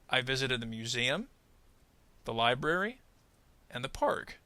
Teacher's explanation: museum and library basically receive kind of similar rises, but we don't exactly fall off at the end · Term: series thought group